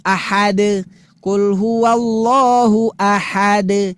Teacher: Yang ada dia itu adalah qalqalah. Huruf terakhirnya dal itu adalah memantul.